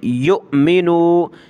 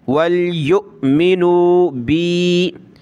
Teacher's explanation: حمزہ کے اوپر یہ جزم ہے، حمزہ ساکنہ کہلاتا ہے، اور حمزہ ساکنہ کو جھٹکا دے کر پڑھیں گے